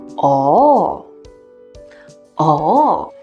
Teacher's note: it is marked as the fourth falling tone but in real life people often say with a twist like a combination of tones